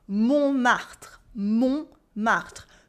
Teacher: The T is silent in the middle.